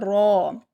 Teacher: زال، رو، رو کو پر پڑھیں گے، رو کو پڑھتے ہوئے ایک ہی را ادا ہونی چاہیے، رو 2 رو ادا نہیں ہوں گی